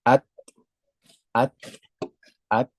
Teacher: jadi nafasnya hanya sekedar percikan saja nafasnya tidak teralirkan secara sempurna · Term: syiddah